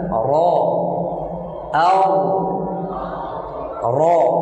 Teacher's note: Awal punggung ujung lidah pada posisi gusi dua gigi seri atas, yaitu huruf ro